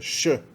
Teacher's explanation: E o S com cedilha embaixo representa o som Sh, a fricativa pós-alveolar surda